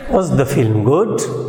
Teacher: there will be a rising tone and it will be given before the stressed syllable where the change in pitch begins